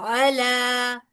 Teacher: आइन के लिए जरूर हलक में आवाज आएगी। लाम के लिए फिर दोबारा स्ट्रेट हो जाएगा।